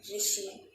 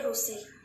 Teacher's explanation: जो है री, ये जो ध्वनि है, आप लोग री उच्चारण नहीं करते उड़िया वाले करते हैं रू।